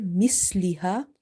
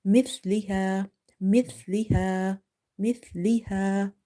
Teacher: Mithliha, Mithliha. Sa is from the tip of the tongue when it touches the inner edges of your top two front teeth. If you leave the tongue loose and if you say misliha, you will end up pronouncing seen here. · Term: tha